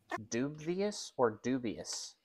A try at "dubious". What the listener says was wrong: Dubious. No V.